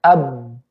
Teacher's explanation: huruf ba yang sukun tanpa kita qalqalahkan. Ab. Ingat fokusnya bibir, ya.